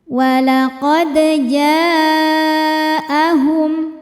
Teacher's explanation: Huruf dal sukun hukumnya qalqalah sughra karena ada huruf qalqalah yang sukunnya sukun asli dan ada di tengah bacaan. Cara bacanya dal dipantulkan dengan pantulan yang kecil. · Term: qalqalah sugra